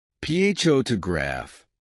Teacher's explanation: in the word photograph, the stress is on the first syllable